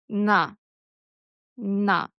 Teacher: The hard N, as in na, is easy. Tongue tip is up, behind the top teeth, just like the hard L.